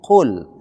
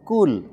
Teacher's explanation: Penyebutan qul itu bukan kul, tapi qul. Huruf qaf itu di tenggorokan. Maka tidak boleh dia di ujung lidah. Tidak boleh dikatakan kul, tapi qul.